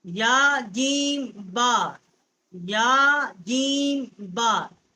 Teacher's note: اور با جو ہے ہونٹوں کی تری سے ادا ہوتی ہے · یا کا جو مخرج ہے یہ بھی وسط زبان اور اوپر کا تالو ہے